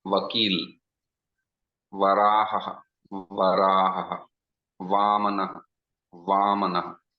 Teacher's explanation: Va is the only word which is Dantostham, upper teeth and lower lip.